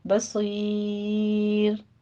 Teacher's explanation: بصیر میں صاد کو پر پڑھیں گے · یا مدہ کے بعد ہم وقف کر رہے ہیں تو رو بھی باریک ہو جائے گی